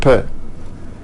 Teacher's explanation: i open my lips again and you hear a small explosion that small explosion that's the sound of the per and similarly